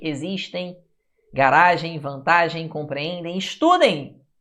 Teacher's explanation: Você não fala existem. Você não fala com som de M. O som é de I.